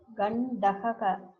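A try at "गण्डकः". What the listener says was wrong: No, it's not correct. there is a problem between gakara and kakara in your pronunciation. It looks somewhat same. Gandagaha. Not gandagaha. I'm hearing like that. Gandakaha. I think the problem of the Tamil, the gaka, it is in Tamil only one letter is there that influences there.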